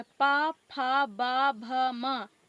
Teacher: फिर पा वर्ग, यह पा वर्ग व्यंजन लिखे, पा वर्ग युक्त व्यंजन लिखे। तो पा हमारा जो है ओष्ठ से टकराती हुई निकलती है · हमारा जो पा है, फा है, तो हमारा ओंठ जो है दोनों टच होता है। तो यह ओष्ठ व्यंजन हो, ओष्ठ से निकलने वाले व्यंजन होते हैं।